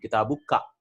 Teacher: So kaf is like a middle place. It's not totally back like the throat and totally front like the lips